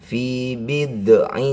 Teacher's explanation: ini bukan qalqalah jadi tidak boleh dipantulkan